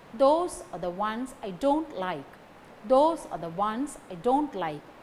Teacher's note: Those ones don't like carry stress. Okay. That should be pronounced in a strong way, and the other words are the weak forms.